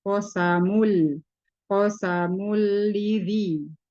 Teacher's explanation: tanwin bertemu dengan huruf lam yaitu berarti idgam idgam bila gunah dileburkan tanpa didengungkan. Jadi tidak ditahan di sini cuma dileburkan tanpa ditahan, tanpa didengungkan.